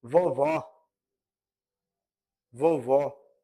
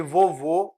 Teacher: No caso de vovó, que é aberta, a vogal aberta, no caso de vovô, o O já é uma vogal fechada.